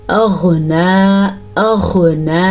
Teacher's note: غین کو پر پڑھنا ہے کیونکہ غین حروف مستعلیہ میں سے ہے